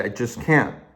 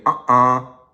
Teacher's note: that catch in the throat when you cut off the air stream in your mouth and you go like for example when you say uh-uh.